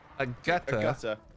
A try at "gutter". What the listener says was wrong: We just pronounce the R more. It's just gutter. Gutter. There's a reason the R is there, you know what I mean?